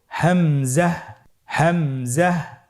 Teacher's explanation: হামজা হরফটি উচ্চারণ ক্ষেত্রে বারিক করে উচ্চারণ করতে হবে এবং এখানে টেনে পড়া যাবে না, দ্রুত পড়তে হবে।